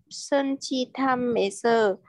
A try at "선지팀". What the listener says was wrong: 선지팀, không phải 선지탐.